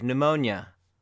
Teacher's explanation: In pneumonia, the P doesn't have any sound.